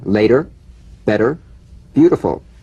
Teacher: the medial t becomes a soft d all right it's not a complete d but it goes toward a d